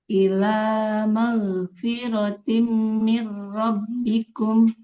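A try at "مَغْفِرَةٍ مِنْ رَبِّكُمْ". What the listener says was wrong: Nah, ghainnya jadi harus mengalir suaranya. Mau nggak boleh mag. Kemudian harus tebal juga. Maghfiratim mir rabbikum.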